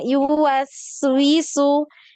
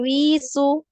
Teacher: Yuwaswisu jangan wisu ya. Wisu pendek. Winya pendek ya.